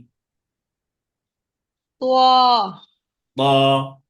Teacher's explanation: মোটা আওয়াজে এক আলিফ টেনে এক পড়তে হবে।